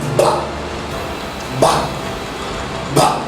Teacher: when you pronounce this sound, the vocal cords do vibrate. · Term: voiced sound